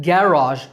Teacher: British English stress on first syllable